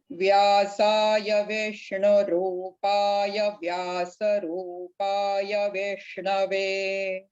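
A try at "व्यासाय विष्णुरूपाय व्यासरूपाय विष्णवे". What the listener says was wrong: Press that Vya sound little more.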